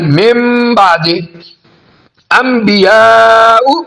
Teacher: نون ساکن کو ہم چھوٹی میم میں بدل دیتے ہیں اور غنہ بھی کرتے ہیں۔ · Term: اقلاب